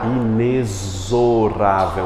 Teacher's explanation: A gente pronuncia o X aqui como um som de CS, mas na verdade é um Z. Coloque aí por gentileza. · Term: som de Z